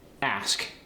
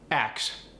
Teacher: there's the case where the S switches places with the K